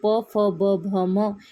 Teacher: जे वर्ण उच्चारताना आपले दोन्ही ओट एकमेकांना भिडतात त्यांना ओष्ठवर्ण म्हणतात